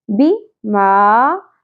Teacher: با کے نیچے زیر کو زیادہ نہیں کھینچیں گے، اور میم کی زبر کے ساتھ الف ہے، حرف مدہ ہے، ایک الف کے برابر ہوگا.